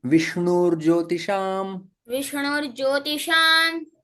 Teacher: यहाँ पर जो विसर्ग है वो रेफ में परिवर्तित हो जाता है।